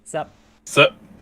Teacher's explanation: you don't even have to say the p and sup you just do a glottal stop